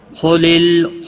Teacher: خا حروف مستعلیہ میں سے پور پڑھا جائے گا، لام ساکن کو ہلانا نہیں